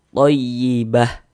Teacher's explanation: Dan kaidah dalam membaca huruf ta marbutah apabila kita berhenti, kita berwakaf tepat di huruf tam marbutah, maka dia menjadi huruf H. Ini kalau kita berhenti di huruf tamarbutah maka dia menjadi huruf H